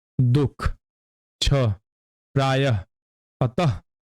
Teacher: यह वह ध्वनि है जो कुछ तत्सम शब्दों में स्वर के बाद ह रूप में उच्चरित होती है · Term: विसर्ग